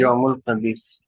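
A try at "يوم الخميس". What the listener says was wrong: हाँ, खबीस नहीं, खा खा, खमीस, खा मीम यासीन, हाँ खमीस, यौमुल खमीस।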